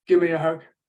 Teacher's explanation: the V of give has disappeared or Amalgamated with the m there